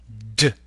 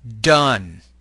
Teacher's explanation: Like the T, the D is an alveolar stop consonant. Make this sound with vibration of the vocal folds.